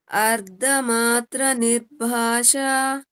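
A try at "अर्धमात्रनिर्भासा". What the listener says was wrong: It is Saraswati wala sa, so it is not sha, it is sa. Nirbhasa. Sa. Ardhamatra Nirbhasa. वैसे ही हम लोग like we won't say, if we want to say shame, we won't say same because the meaning will change like that.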